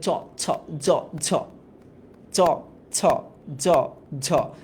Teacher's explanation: তার মানে একটু খেয়াল করো, জিভের সামনের অংশটা শক্ত তালুর সাথে একটা ঘষা খায় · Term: তালব্য